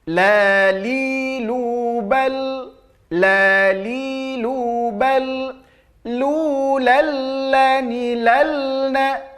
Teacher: ada sifat inhiraf pada huruf lam, yaitu memalingkan lidah baik ke kiri ataupun ke kanan supaya ia tak terpantul